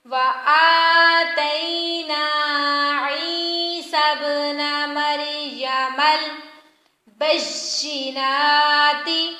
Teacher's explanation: شاد والے حرف کو سختی کے ساتھ پڑھیں گے اور کھڑی زبروں کو لمبا کریں گے۔